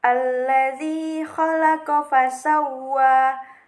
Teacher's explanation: Khalaqa fasawwa, wa-nya itu berhukum tajwid mad tabi'i, karena huruf waw berharokat fathah ini bertemu dengan huruf alif di atasnya, maka dibaca panjang sepanjang 2 harokat